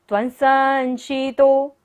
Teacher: बिंदी के बाद क्या है? स, तो बिंदी का उच्चारण क्या होगा? न।